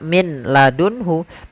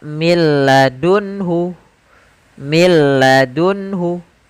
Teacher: langsung ke huruf lam karena nunnya dianggap tidak ada dan diidgamkan ke huruf lam maka milladunhu milladunhu langsung saja Kemudian ada beberapa catatan pada idgham